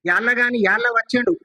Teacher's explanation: ల ను మళ్ళీ ద్విత్వ లకారం చేసి స్పెసిఫిక్ గా పలుకుతున్నారు ఒత్తి పలుకుతున్నాడు